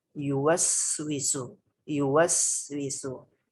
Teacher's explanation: Jadi, ada sedikit jeda memberikan desisan di huruf sin ini. Sin yang bersukun ini. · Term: sifat sofir